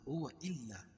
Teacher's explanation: حمزہ کو لام میں سختی کے ساتھ ملائیں گے کیونکہ لام کے اوپر تشدید ہے، تشدید والا حرف 2 مرتبہ پڑھا جاتا ہے